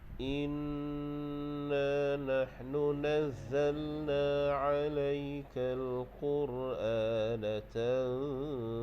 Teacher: Baik, ayat yang ke-23 ini dari segi hukum tajwid dia, ada segi hukum wajibal gunnah tu kita dengung lah, nun yang bersyaddah tu hukumnya dengung. Okey, kita wajib dengung 2 harakat